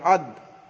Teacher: দালের মাখরাজ জিবের আগা সামনের উপরে দুই দাঁতের গোড়ার সঙ্গে লাগিয়ে উচ্চারিত হয় দাল, হামজা দাল যাবে আদ, এখানে একটু কলকলা হবে, কলকলা মানে ধাক্কা দিয়ে পড়া।